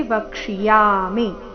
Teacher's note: ಚರಣದಲ್ಲಿ ಇನ್ನೊಂದು ಗಮನಿಸಬೇಕಾದ ವಿಷಯ ವಕ್ಷಿಯಾಮಿ ಹಿತ ಈ ರೀತಿ ಮೀನ ದೀರ್ಘ ಮಾಡಬಾರದು ವಕ್ಷಿಯಾಮಿ ನಲ್ಲಿ ಯ ದೀರ್ಘ ಮಿ ರಸ್ವ